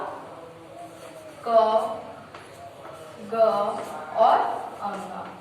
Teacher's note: उच्चारण में कम वायु का प्रयोग हो उसे हम क्या कहते हैं, अल्पप्राण कहते हैं